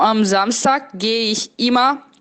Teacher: Immer com ER no final tem som de A